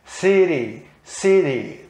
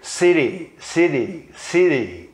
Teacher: É um som meio D, meio T, não é nem T, aliás, meio R, meio D.